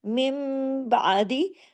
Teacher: नून की आवाज मीम में बदल जाती है। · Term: इकलाब, इक़लाब